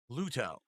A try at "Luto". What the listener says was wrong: Just say Luto. Just say that. You don't have to pronounce the T heavily.